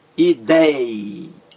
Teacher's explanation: A palavra ideia, 3 sílabas. A mais forte é dei, ideia.